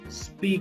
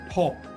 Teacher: non aspirated का मतलब है हा की साउंड इसमें नहीं आएगी in the middle of words